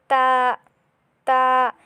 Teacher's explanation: তাটা পড়তে হবে জিহ্বার আগা সামনের উপরের দুই দাঁতের গোড়ার সাথে লাগিয়ে